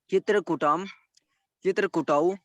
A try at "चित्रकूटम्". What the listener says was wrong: फिर कुटौ कह दे रहे हैं, चित्रकूटम कह दे रहे हैं। चित्रकूटम, चित्रकूटौ, चित्रकूटान। छोटे ऊ की मात्रा हो रही।